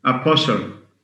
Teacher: Whenever you have this combination, S-T-L, the T is silent. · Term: Silent T